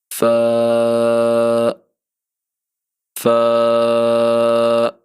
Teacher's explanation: سامنے اوپر والے دو دانتوں کے سروں کو ہم نیچے والے ہونٹوں کے گیلے حصے کے ساتھ لگائیں گے